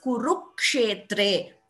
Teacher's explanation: You're in both the places, dharma kshetre, kurukshetre, you're getting that second k before the ksha. So that is an example also of dvitvam.